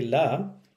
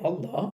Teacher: generally when we say la, we say it's a soft sound, light sound. But when we say Allah, we make it heavy.